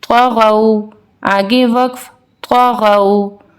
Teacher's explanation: واو مدہ سے پہلے زبر ہے تو اس کو ہم سافٹلی پڑھیں گے لین طریقے سے